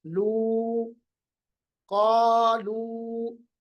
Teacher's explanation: क़ा को भी हमने लंबा किया, लू को भी हमने लंबा किया, क्योंकि दोनों हर्फ मद्दा है। इसमें अलिफ और वाव हर्फ मद्दा है।